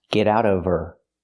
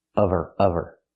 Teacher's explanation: Now we need the v sound in of because we don't pronounce the h in her. We link the sounds.